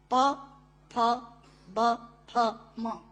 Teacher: दोनों होंठ मिलाकर बोले जा सकते हैं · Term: ओष्ठांग